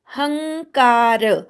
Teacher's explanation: ह वर अनुस्वार आहे, त्याचा ङ झालाय पुढे क आल्यामुळे, त्यामुळे ङ ला क जोडलाय, तेही जोडाक्षर नाही, अनुस्वाराचा ङ झालाय, म्हणून ह वर पण आघात येणार नाही.